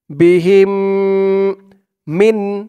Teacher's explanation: হা মিম জের হিম গুন্না করে এই মিমকে ধরতে হবে